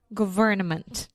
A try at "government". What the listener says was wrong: Yeah, just remember the N in government. We don't have to say that. So government. Yeah, you don't have to say it super fast. Just government.